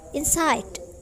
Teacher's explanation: Jadi primary stress-nya itu adalah side.